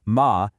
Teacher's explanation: The third ma does this little dip down and then up.